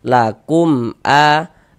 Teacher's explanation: maka dibaca jelas, tidak berdengung, baca pendek saja. Lakum a pendek begitu. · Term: izhar syafawi